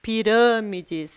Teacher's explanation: em pirâmides, a gente tem o acento circunflexo, o que deixa o som dessa palavra fechado. Pirâmides.